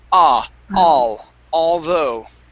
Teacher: instead of oh it's an ah so open up the mouth a bit more · stress on the end of the word although okay so instead of oh it's an ah so open up